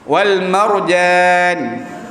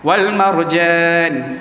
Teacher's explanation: orang Arab ni dia sebut huruf ja tanpa bernafas. Tak bernafas.